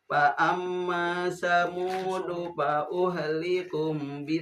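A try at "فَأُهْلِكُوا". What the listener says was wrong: Pak uhliku panjang.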